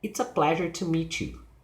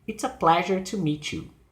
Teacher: The intonation is falling.